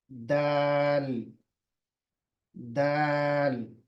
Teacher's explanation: ये जबान की नोक दांतों के पीछे जो मसोड़े हैं, जो गोश्त का हिस्सा है, वहां पर लगेगी। ऊपर के जो दो दांत हैं उसके पिछला हिस्सा।